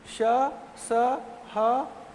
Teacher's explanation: इसके बाद आते हैं, इसे संघर्षी इसलिए कहते हैं, संघर्षी या फिर ऊष्म व्यंजन, ऊष्म व्यंजन इसलिए कहते हैं क्योंकि इसमें घर्षण होता है। श स ह, इसमें एक प्रकार का घर्षण होता है, संघर्षी, संघर्षी।